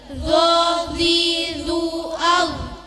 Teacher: Posisi di antara punggung lidah dan pucuknya gigi depan yang atas, mulut maju dengan mengangkat lidah dari pangkalnya dan suara tebal